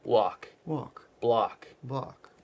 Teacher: pay attention to your L cuz those are very strong in your neutral dialect right the block and walk and we want to just soften it